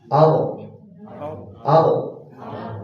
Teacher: Jadi getaran getarannya berlebih. Jadi getaran huruf ra itu satu kali. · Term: takrir